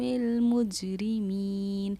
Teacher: یہاں جیم پر تشدید ہے، اس لیے جیم پر ہم نے قلقلہ کیا. آواز کا لوٹنا ہمارا قلقلہ کرنا کہلاتا ہے، اسی لیے ج کی آواز کا لوٹنا جیم کی قلقلہ کرنا کہلایا